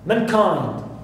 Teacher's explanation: So I stress second element here also, which is kind, and not the first one, because these three represent, okay, the exceptions for this rule.